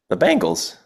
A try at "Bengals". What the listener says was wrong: So that's not how you say it. There's an E after the B. Bengals.